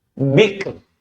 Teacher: Sebelumnya ada huruf kaf sukun dan sebelumnya ada ba berharokat kasrah. Bi ketemu dengan kaf, bik, kemudian ro, r-nya jadi tipis. Bik, tidak bikr, tidak tebal.